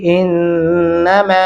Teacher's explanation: ان یہاں پہ غنہ بھی کریں گے, اور میم کے سامنے الف اور دو الفی مدہ بھی ہے, آواز کو لمبا کریں گے